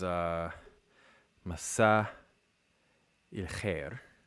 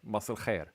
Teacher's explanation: the stressed syllable, the vowels coalesce, and then everything just becomes a syllabic L, but it's weird to just lose the vowel in a stressed syllable.